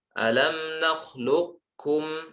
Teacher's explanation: Beliau berpendapat kata seperti ini, nakhlukum, sifatnya itu tetap, sehingga kita baca idgham naqis, artinya qafnya tetap tersisa. Cara bacanya alam nakhlukum, ke qaf dulu baru ke kaf.